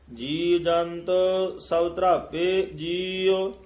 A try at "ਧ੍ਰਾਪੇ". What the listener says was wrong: ਧਰਾਪੇ ਭੇ ਨਹੀਂ ਧਰਾਪੇ, ਪੱਪੇ ਨਾਲ ਉਚਾਰਨ ਕਰਨਾ ਹੈ। ਜੀ ਜੰਤ ਸਭ ਧਰਾਪੇ ਜੀਉ।